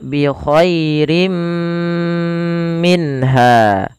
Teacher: dia perlu ditahan karena dia ada bacaan ghunahnya. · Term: idgam bighunah